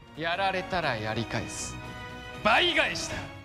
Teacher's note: 日文里面拼音▁U▁结尾的音，你注意听就知道它其实是没有圆唇的 ，所以▁SU▁不应该念作▁SU，▁而是不圆唇的▁S。▁是やられたらやり返す、倍返した。变音符号就是一些可以加在子音或母音上面的符号，做一些补充说明，改变它们的发音。例如在一个子音下